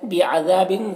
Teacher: ذال میں الف مدہ ہے, ایک الف کے برابر کھینچیں گے